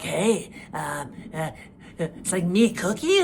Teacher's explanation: That kind of growl in his voice that he has, and it's sort of like, hey, it's like me cookie or me it's sort of a big cookie monster, and a bit like Patty and Selma.